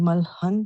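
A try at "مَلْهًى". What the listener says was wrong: Malha, very good.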